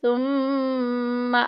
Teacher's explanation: میم مشدد آ گئی، غنہ کریں گے، ناک میں آواز لے کے جائیں گے